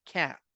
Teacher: es una unión entre una a y una e como que si fuera una una fusión de esas dos letras verdad y suena como entonces no es ni a ni e